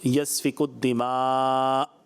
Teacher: حمزہ ساکن کو ہمیشہ جھٹکا دے کے پڑھتے ہیں